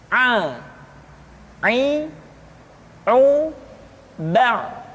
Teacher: pengucapan huruf A dikeluarkan dari tengah-tengah tenggorokan seperti kita mengucapkan huruf H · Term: huruf Ain